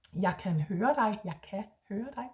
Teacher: But there is an R at the end, which the Danes often don't put.